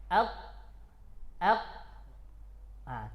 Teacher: Jadi pada aslinya itu qaf itu tertahan nafas, tertahan suara.